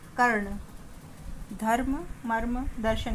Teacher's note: जिस वर्ण पर यह लगता है उससे पहले इसका उच्चारण होता है, जैसे कर्ण, का और ना के बीच में रा का उच्चारण हो रहा है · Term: रेफ